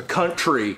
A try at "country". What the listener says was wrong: Say that's two words. That is one word. It's country.